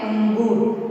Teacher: उसकी जो आवाज है वो थोड़ा नाक में से निकल रही है